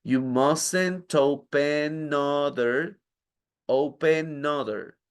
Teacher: You mustn't open, y open termina en N. Esa N va pegada a la siguiente palabra.